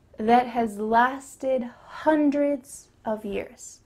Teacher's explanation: She also emphasizes the word hundreds